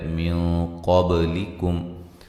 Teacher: نون ساکن کا یہ موٹا اخفا ہے